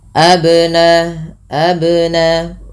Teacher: ada sifat yang melekat pada huruf ba yaitu qalqalah yang di mana memantul ya bunyinya maka tidak dibaca dengan abnaahum tapi harus ada pantulan abnaahum tapi tidak pula dibaca dengan B.